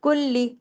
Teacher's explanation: کلی، لام کاف لام پیش کل اور لام زیر لی، کلی دونوں دفعہ لام کو پڑھنے میں آنا چاہیے